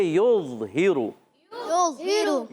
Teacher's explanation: یظہر یا کو ضا سے ملانا ہے، ضا حرف مستعلیہ اور حرف مطبقہ ایکسٹرا موٹے حروف میں سے، تو یہاں موٹا ہو جائے گا